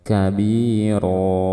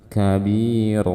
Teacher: ada tanwin Fathah di akhir bacaan hukumnya disebut Mad iwad hukumnya seperti Mad thii yaitu dibaca Dua harakat